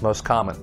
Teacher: we usually drop the t sound